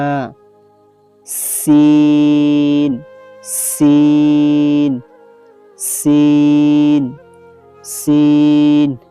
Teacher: জিহ্বার আগা সামনের নিচে দুই দাঁতের পেট ও আগার সঙ্গে লাগাইয়া